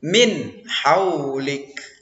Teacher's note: Nomor 6 pada kata min haulik, ini izhar, ya. Jadi nun matinya itu dinyatakan, tidak boleh didengung di situ karena ada huruf izhar di depannya, ya, yakni huruf ha.